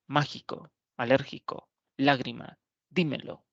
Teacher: tipo de palabra según su acento y son aquellas palabras esdrújulas tienen el acento en la antepenúltima sílaba · Tienen el acento en la antepenúltima sílaba y por regla general se deben tildar todas. · Por ejemplo, cuando hablamos de la palabra cúspide, es una palabra trisílaba, tiene tres sílabas y la mayor fuerza de voz recae en la antepenúltima sílaba